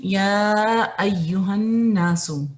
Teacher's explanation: یا آپ کا مد ہے 4 حرکت یہاں پر، اور جس چیز کا آپ نے خیال رکھنا ہے وہ یہ کہ آپ اس کو فالو کریں 4 حرکت، تو اس کے ساتھ ساتھ آپ نے یا کو بز نہیں کرنا، جیسے اس کو چبا کے نہیں ادا کرنا۔